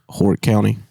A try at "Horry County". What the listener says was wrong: Ori. I think the H is silent.